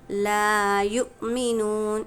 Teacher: حمزہ ساکنہ کے پڑھنے میں ہم کو جھٹکا دے کر پڑھنا ہے، یعنی لا یؤمنون۔